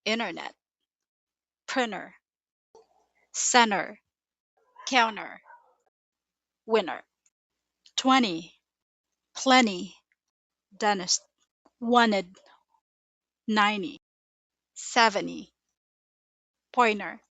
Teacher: The T between N and vowel becomes a very light flap. It sounds like it's disappearing.